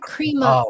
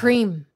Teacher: Nó có cái KH sound. It's aspirated a bit there.